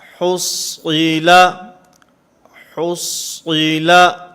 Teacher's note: اسی طرح حصیلا، حصیلا، صاد کو پر پڑھیں گے، ہا کو بھی باریک پڑھیں گے، لام کو بھی باریک پڑھیں گے